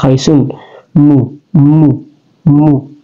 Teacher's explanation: keluar di bibir kita kemudian dia juga keluar di hidung